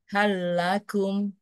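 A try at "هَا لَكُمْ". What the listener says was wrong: Nanti dilatih terus ya, tanpa menggerakkan rahang lagi ya.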